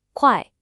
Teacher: Make sure you get that sharp, falling tone on the first part.